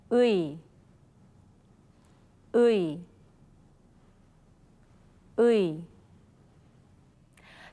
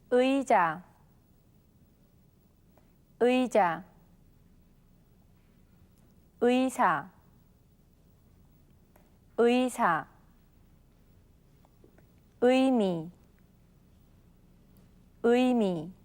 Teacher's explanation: It's a combination of the vowel sounds ư and 이. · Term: vowel sound 의